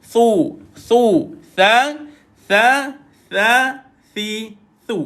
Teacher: Huruf tha tumpah hujung lidah dikeluarkan. Duduknya di bawah gigi atas.